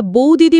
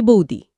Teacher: পাশাপাশি দুটো একই রকম ব্যঞ্জন থাকলে অনেক সময় তার একটা লোপ পায়। যেমন আমরা বৌদিদি বলি না, বলি বৌদি। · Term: সমাক্ষর লোপ